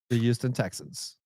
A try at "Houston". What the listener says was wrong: It's Houston. Well, anyway, it doesn't start with a Y.